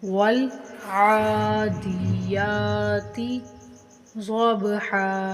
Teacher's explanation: ضاد پر حروف ہے، اس کو موٹا پڑھیں گے اور با کے اوپر کلکلا یعنی ہلا کر پڑھیں گے۔ ہا کو ایک الف کے برابر کھینچ کر پڑھیں گے، ضبحا۔